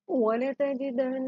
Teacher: نون بشد ہے تو یہاں ہم گننا کریں گے، ناک میں آواز جائے گی. نون مشدد اور میم مشدد پہ ہمیشہ گننا ہی ہوتا ہے.